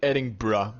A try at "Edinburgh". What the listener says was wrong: It's not. It's how it's pronounced. Edinburgh. Edinburgh. Without the G, just Edin. You don't pronounce a G. It's just Edinburgh. Edinburgh.